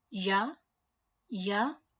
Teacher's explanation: the middle of the tongue is close to touching the palette or roof of the mouth